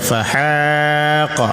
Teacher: Kenapa dipanjangkan? Karena ada alif yang bersambung dengan ha, ini disebut mad asli atau mad tabi'i. 2 harakat panjangnya.